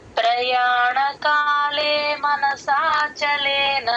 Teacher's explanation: అది పా కింద రకారం కాలే మనసా ఆ స కొంచెం పైకి అంటే లాస్ట్ నుంచి ఫోర్త్ లెటర్ కొంచెం పైకి లేపుతాం అన్నమాట